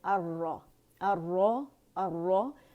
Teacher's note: را شمسی حرف ہے، اس نے اپنے اندر لام تعریف کو مرج کر لیا، اس وجہ سے وہ پڑھا نہیں جا رہا. اسے اگر الگ سے بھی پڑھیں گے تو الرا ہی پڑھیں گے، الرا نہیں پڑھیں گے. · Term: لام شمسیہ